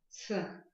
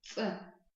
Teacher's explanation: звук резкий, и при его образовании нет придыхания